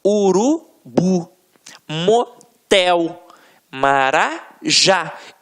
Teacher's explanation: a pronúncia da última sílaba ficará mais forte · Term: oxítona